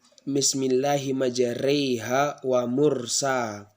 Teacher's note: Imalah itu adalah seperti kita membaca huruf lebih ke huruf E